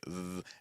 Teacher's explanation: I can do a th with the tip of the tongue against my top tooth like th. I can do it against my bottom front tooth like th.